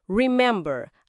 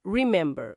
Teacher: A tônica tá na segunda sílaba